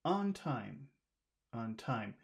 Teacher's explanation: we'll emphasize the word time